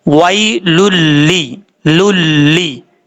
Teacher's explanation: را اور لام، ان میں نون ساکن اور نون تنوین کے بعد غنہ نہیں ہوگا، ادغام ضرور ہوگا، باقی سب میں غنہ ہوتا ہے۔ تو یہاں پر لام ہے 2 پیش کی تنوین کے بعد، اس لیے یہاں پہ غنہ نہیں کریں گے، صرف ادغام ہی کریں گے۔